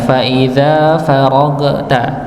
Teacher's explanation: Ya, ini sekali lagi juga sama, cuma yang kami perlu perhatikan adalah huruf gha nggih. Huruf gha yang sukun ini jangan sampai dipantulkan. Ya, fa idza faraghta.